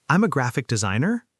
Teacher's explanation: Uptalk where every sentence sounds like a question.